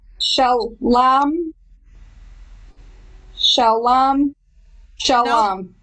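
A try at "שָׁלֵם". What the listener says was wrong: Or shalem. I prefer the A, the long A sound.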